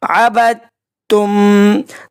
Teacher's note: عبد تم، دال کے اوپر جزم ہے، آگے تشدید ہے، جب بھی پہلے جزم بعد میں تشدید آ جائے تو ہم نے جزم کو سائلنٹ کرنا ہے اور تشدید کو پڑھنا ہے۔ یہاں پہ دال جو ہے وہ نہیں پڑھا جائے گا، سائلنٹ رکھا جائے گا، با کو ہم نے تا سے ملانا ہے